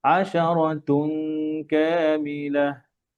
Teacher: আশারাতুন কা, কাফের গুন্না লেগে যাবে